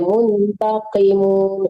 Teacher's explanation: di qafnya membaca qafnya itu kalau kasrah ibu tetap bacanya tebal ya